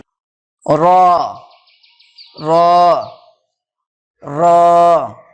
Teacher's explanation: জিহ্বার আগার উল্টা পিঠ এবং তার বরাবর উপরের তালুর সাথে লাগিয়ে উচ্চারিত হয় র।